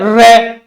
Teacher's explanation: जीभ है, ये कंपन करती है। रे बोलोगे ना तो जीभ कंपन करेगी, कंपन करके नीचे गिरती है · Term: परकंपित